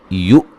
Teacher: حمزہ کو جھٹکے سے ادا کیا جائے گا